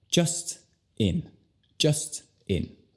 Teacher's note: Y así tiene razón, porque son dos palabras con una sílaba no enfatizada, cada una. Entonces, ya que no hay una sílaba enfatizada, ya sabes, las vocales se convierten al sonido schwa